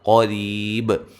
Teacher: قاف کو موٹا ادا کریں گے، ری یا مدہ ہے، اور را کو باریک پڑھیں گے